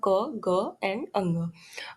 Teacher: Velar, टंग back plus soft palate, soft palate को वेलम भी बोलते हैं, एग्जाम्पल है इसका क, ग एंड अंग।